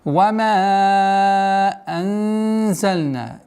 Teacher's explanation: Ихфа мягкое произношение, так как звук зай мягкий звук. Удержание в размере 2 огласовок. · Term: Мягкое ихфа